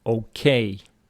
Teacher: Stress of okay on the second syllable